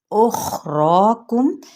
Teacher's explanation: خا حروف مستعلیہ میں سے ہے، اس کو پر پڑھنا ہے، اور را پہ بھی مد اصلی بالالف کا قائم مقام ہے، جس کو ایک الف یا دو حرکات کے برابر کھینچتے ہوئے ساتھ ہی اس کی ادائیگی کیا ہوگی؟